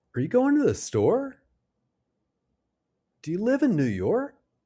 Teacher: Can you hear how the pitch rises at the end? That rising intonation shows we're asking a question that needs a yes or no answer.